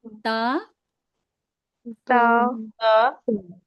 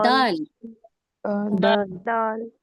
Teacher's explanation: जुबान की नोक को सामने के ऊपर के दो दांतों की जड़ में लगाने से ता अदा होता है।